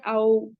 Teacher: क्योंकि हम इससे पहले मखार सीख चुके कि वाव का मखरज क्या है? वह गोल हो बट मिले नहीं।